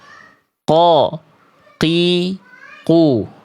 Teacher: huruf qaf itu pangkal lidahnya menyeluruh, nempelnya ke langit-langit lunak saja, alias langit-langit yang paling dalam.